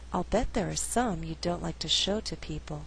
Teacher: I did not stress the verb like although like is a Content word the flow is a little more natural with without stressing all